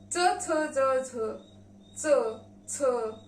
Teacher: ये स्पर्श ध्वनि दांत के पीछे जो मसूड़े होते हैं उसे स्पर्श करके निकल जाती है